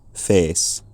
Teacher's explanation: It's still got a stable quality. It's not A like it is in my accent, but it's something more like E, face.